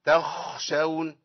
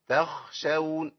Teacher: قال بأن لا يوصل القارئ صوت الخاء إلى صوت الشخير